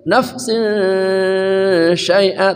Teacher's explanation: An nafsin syai'a, nafsin syai'a, tanwin bertemu shin namanya ikhfa haqiqi, samar